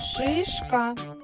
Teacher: шипить давайте пригадаємо правильну артикуляцію звука ш посміхнулись відкрили ротик широке кінчик язичка піднімається до твердого піднебіння бічні крає язичка притиснути до верхніх кутніх зубів губи витягнуті вперед